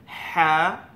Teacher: হাটা আপনার কণ্ঠনালীর একদম ভিতর থেকে উচ্চারণ হবে